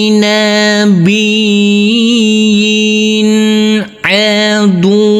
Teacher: huruf ya yang berkasrah tanwin bertemu dengan huruf ain, maka tanwinnya di sini harus kita baca terang atau jelas. Ini adalah bacaan izhar.